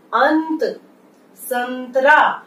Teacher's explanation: ये अनुस्वार है, ये न जैसी ध्वनि देता है